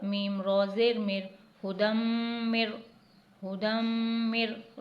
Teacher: ہے، رو تشدید والا یعنی رو مشدد ہے تو اس لیے نون کو حذف کر دیں گے اور میم کو ڈائریکٹ رو سے ملائیں گے ، میم را زیر مر، میم را زیر مر، غنہ نہیں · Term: غنہ نہیں ہوگا